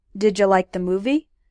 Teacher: didja is the way a lot of native English speakers pronounced did you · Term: reductions